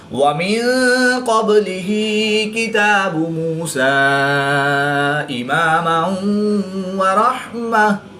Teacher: 2 زبر کی تنوین کو گول تا کو وقف کی حالت میں ہا ساکن سے تبدیل کر کے پڑھیں گے۔